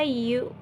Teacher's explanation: bibir yang dibulatkan untuk bunyi U dalam kata you